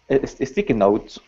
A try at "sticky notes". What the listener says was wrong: Yeah, so make sure to pronounce that N. Sticky notes. Sticky notes.